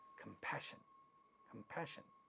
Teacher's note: this is a stress syllable at the initial position getting aspirated · pa at the initial position getting aspirated in this word, and it sounds as compassion, compassion.